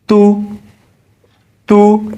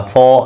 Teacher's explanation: پیش ادا کرتے ہوئے ہونٹ چھوٹا سا گول ہو جاتا ہے، چھوٹا گول ہوتا ہے، بالکل چھوٹا۔ سو، بڑا گول کریں گے تو مجہول ہو گیا، فو ایسے، ٹھیک ہے، ایسا نہ کریں، ہونٹوں کو بالکل باریک چھوٹا گول کریں گے تو حرف کی آواز درست نکلے گی۔